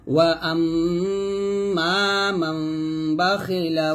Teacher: এখানে দুই ঠোঁট মিলাবেন না ঠোঁটের মাঝখানে একটা ফাঁকা রেখে গুণনা করবেন মিমের উচ্চারণ করবেন তবে ঠোঁটের মাঝখানে ফাঁকা রেখে ওয়া আম্মা মান